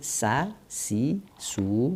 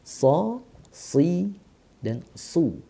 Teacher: Jadi sa, si, su. Kalau sod, so, si, dan su. Nah, pangkal lidah yang membedakan ya.